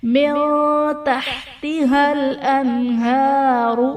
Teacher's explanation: من تحتها الانہار، من تحت حل میں نون ساکن کے بعد حروف اخفا میں سے تا ہے، یہاں بھی اظہار کا قاعدہ ہوگا، معذرت اخفا کا قاعدہ ہوگا. نون ساکن میں ہم غنہ کر کے پڑھیں گے. انہار میں نون ساکن کے بعد حروف حلقی میں سے ہا ہے تو یہاں پر اظہار کا قاعدہ ہوگا، یعنی نون ساکن میں ہم غنہ نہیں کریں گے.